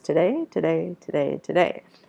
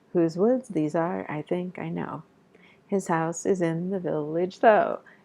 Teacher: so you have a da da rhythm four times so it's like having the word today four times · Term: iambic tetrameter